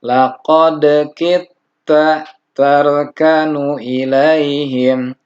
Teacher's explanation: yang harusnya qalqalah dal sukun itu tidak diqalqalahkan karena bertemu dengan ta, yaitu idgham mutajanisain. Jadi bacanya kita, laqad kita tarkanu ilaihim.